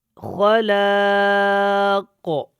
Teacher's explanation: اور یہاں پہ ہم نے وقف بھی کیا، دیکھیں خلاق، کاف موٹا ہے اور وقف میں اس کے اوپر قلقلہ ہوگا. آواز کو ہم دوبارہ پیدا کریں گے جنبش کے ساتھ، خلاق، کو ایکو کی طرح آواز جو ہے وہ پیدا ہوگی.